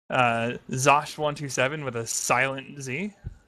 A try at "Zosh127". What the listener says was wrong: It's not silent, it's pronounced like a J.